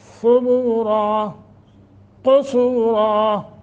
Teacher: کے اوپر ہے، ثبو نہیں پڑھنا، ثبورا قصورا ایسے کر کے، را کو موٹا کریں گے اور نون تنوین کو ختم کر کے الف پہ رکیں گے